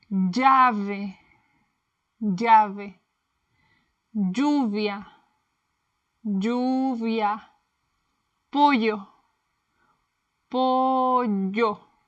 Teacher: Double L, the Spanish Y. In Latin America, we say it like the English Y in yes.